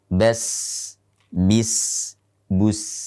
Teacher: Sin termasuk huruf yang ringan dan saat mengucapkannya harus banyak melibatkan nafas. Bas, bis, bus.